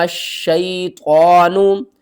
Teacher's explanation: میم کو ہم نے شین سے ملانا ہے، درمیان میں یہ الف اور یہ لام، ان تینوں کو آپ نے چھوڑ دینا ہے۔ شین کو بھی 2 بار پڑھنا ہے اور سختی کے ساتھ پڑھنا ہے